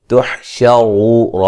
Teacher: را کو موٹا ادا کریں گے، واو مدہ ہے. وقفاً بڑی مد کے ساتھ پڑھ سکتے ہیں.